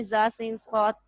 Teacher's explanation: زبان کی نوک سے ادا ہوتے ہیں